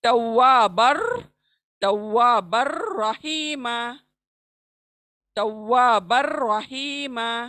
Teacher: بن کے تنوین کا جو نون ہے بن، اس کو ہم ادغام کر رہے ہیں را میں بلا گننا، وداؤٹ گننا